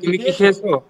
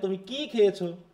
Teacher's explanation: তাহলে খেয়েছোর উপর আমার স্ট্রেস, আর এখানে তুমি কি খেয়েছো, তাহলে এখানে হচ্ছে কি এর উপর স্ট্রেস